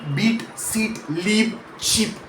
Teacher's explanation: The long e sound has the tongue pushed higher and further forward, tighter, and the sound stretches out longer.